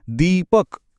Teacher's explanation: એમાં દી લાંબો ખેંચાય છે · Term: દીર્ઘ સ્વર